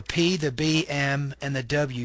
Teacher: these are consonants made by bringing both lips together for example the P the b m and the w sounds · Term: bilabial consonants